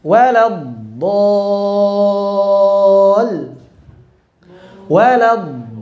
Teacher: Yang dinabar hanya lamnya. Itu pun jangan berlebihan.